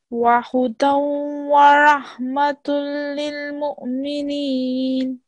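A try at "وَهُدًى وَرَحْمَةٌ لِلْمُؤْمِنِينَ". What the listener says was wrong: A little bit thicker. وَرَحْمَةٌ.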